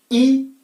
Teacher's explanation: ई जीभ हिलेगी जरूर, लेकिन आप देखिए जिह्वा किसी स्थान को टच नहीं करेगी, किसी स्थान को नहीं छुएगी।